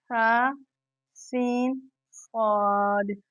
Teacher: سا نرمی سے پڑھا جائے گا، سین کو سیٹی کے ساتھ، صاد کو بھی سیٹی کے ساتھ ادا کریں گے